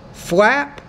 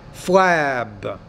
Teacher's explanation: When the P's at the end of the word, because it's a voiceless consonant, the vowel which precedes it is shorter. Similarly, when the B's at the end of the word, because it's a voice consonant, the vowel which precedes it is longer.